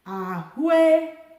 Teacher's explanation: because these 2 vowels have the same tone, I can just say ahụekere. So, ue will have just the same tone instead of having to.